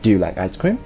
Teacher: the rising intonation is used in yes/no questions